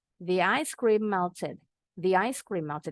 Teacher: Seperti M-nya cuma satu. Jadi nggak usah dipanjangin bacanya ya. Karena bukan huruf mim bertasdid nih kalau baca, kalau ngaji. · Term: Linking consonant